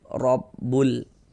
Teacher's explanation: Maksudnya dibaca izhar itu huruf lamnya terbaca dia dengan jelas, terbaca dia dengan terang, terbaca ada tanda sukunnya. Robbul, terbaca kan huruf lamnya. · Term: izhar qamari